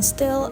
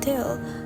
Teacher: Both are stops, voiceless, and alveolar. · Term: alveolar stops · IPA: [t] and [t^h]